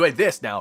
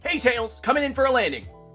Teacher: Slightly lower timbre. It's in that lower part, the vocal fry part.